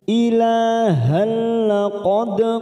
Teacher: hanya masuk tanpa mendengung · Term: idgham bila guna